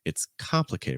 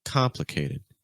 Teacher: We're stressing the first syllable.